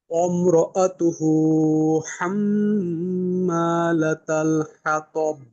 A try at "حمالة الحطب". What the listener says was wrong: আবারও কিন্তু কলকলার ফিরতি আওয়াজটা পাওয়া গেল না। হাতব, কলকলার দ্বিতীয় অংশের আওয়াজ অবশ্যই হবে প্রত্যেকটা কলকলার ক্ষেত্রে, বাকি কম বেশি। এখানে হবে মধ্যম। হাতব।